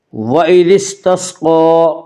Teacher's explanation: قاف کو پر پڑھیں گے، قاف حروف مستعلیہ میں سے ہے۔